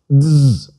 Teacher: zeta buzzes more in Greek because we should insert a D sound as well. Technically, ZD as in Mazda, but it's a lot easier to say DZ, dz, which is what I generally do.